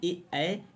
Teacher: तो चौथे का राइट आंसर ए क्या है, ए, ऐ ये कंठ तालव्य है दोस्तों। ए, ऐ वर्ण जो है कंठ तालव्य, इनका उच्चारण अर्थात कंठ एवं तालु के जीभ के स्पर्श से किया जाता है